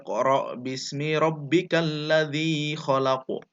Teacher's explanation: huruf qaf harus ada pantulan pantulan kecil